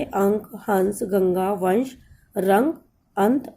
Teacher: इनके उच्चारण में हवा केवल नाक से निकलती है और इनका उच्चारण अधिक जोर से होता है। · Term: अनुस्वार